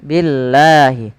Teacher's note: lafal Allah kita panjangkan sepanjang 2 harakat